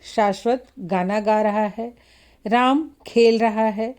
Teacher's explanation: इसमें शाश्वत शब्द पर बल देने से यह स्पष्ट है कि शाश्वत ही गाना गा रहा है कोई दूसरा नहीं है उसी तरह से राम खेल रहा है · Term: शब्द बलाघात